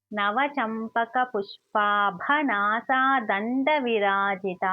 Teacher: పుష్ప చ కింద ప వ ఒత్తు వచ్చింది ఇంకా దీర్ఘం కూడా ఉంది. భ అన్నప్పుడు ఇది మహా ప్రాణాక్షరం అయితే బ అన్నప్పుడు కొంచెం ఒత్తి పలకాలన్నమాట నా సా ఇవి దీర్ఘాలు దం అన్నప్పుడు ద పక్కన సున్నా ఉంది తా